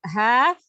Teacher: keluar dari tenggorokan bagian bawah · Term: huruf h